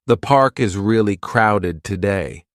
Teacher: The falling tone at the end makes it clear this is a comment, not a question.